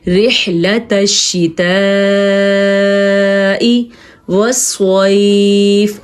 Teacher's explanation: रिहलतश्शिताइ, अगर आप इस मत को पढ़ते हैं रिहलतश्शिताइ, यकीन करें आप एक बड़ी गलती कर लें, क्योंकि कुरान मजीद की खूबसूरती है, उसकी तजवीद है, उसके तलफ़्फ़ुज़ है कि ये मत 5 अलीफ के बराबर होती है। तो इस मत को हमने लंबा करके पढ़ना है